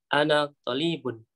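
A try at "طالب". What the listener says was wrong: Bukan talibun, bukan. Talibun. Talibun. To-nya panjang. Talibun. Jadi yang tidak panjang jangan dibaca panjang. Tapi yang panjang jangan dibaca pendek. Yang panjang yang baca pendek, yang pendek yang panjang. Dalam bahasa Arab berbeda baca panjang dan pendek itu bisa berbeda arti.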